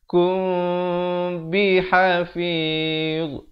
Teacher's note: Di sini ikhfa syafawi sekali lagi. Mim mati bertemu ba dibacakan dengan samar 2 harakat.